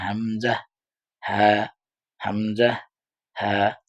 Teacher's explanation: এরপর হচ্ছে হা আর হামজা। এই ২ টা একই জায়গা থেকে হলক বা কণ্ঠনালীর শুরু হইতে পড়তে হয়